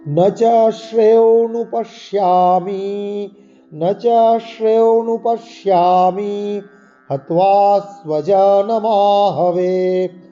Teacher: এই ন চ শ্রে তালিবস্যের উচ্চারণ তালুর স্থানে লাগিয়ে করতে হবে।